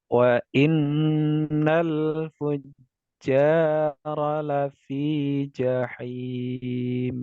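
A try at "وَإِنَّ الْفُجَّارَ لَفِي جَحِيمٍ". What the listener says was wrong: Nah, ini ya huruf jimnya masih terdengar ya, ja ya. Fujarala fi jahim. Nah, ja. Nah, coba je-nya itu dihilangkan. Fuja, fujaro, fujarol, fuj, lafi, ja, bukan ja, begitu. Tengah lidah, langit-langit atas ya. Maka yang bergerak tengah lidahnya mendekati ke langit-langit atas, bukan ujungnya.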